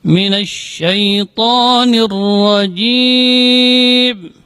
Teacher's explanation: jim ini termasuk huruf syiddah. Dia keluar dari tengah-tengah lidah. Jim, tidak boleh ada angin yang keluar juga. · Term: huruf jim